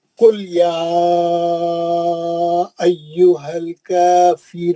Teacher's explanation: یا ایہم میں مد منفصل ہے, 4 حرکت سے پڑھنا ہے نا